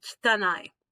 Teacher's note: So kitanai, make that sound like don't quite say the I. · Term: voiceless vowel